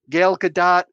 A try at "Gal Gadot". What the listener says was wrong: Yeah, you keep calling her Gail. Gal.